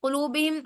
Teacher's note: قلوب کا قاف موٹا پڑھیں گے کیونکہ حرف مستعلیہ میں سے ہے. قلوبہم، حرف مستعلیہ وہ حروف ہوتے ہیں جو ہمیشہ ہر حال کے اندر موٹے پڑے جاتے ہیں.